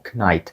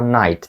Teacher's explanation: на початку є літера K Так я знаю але вона абсолютно глуха її ми не кажемо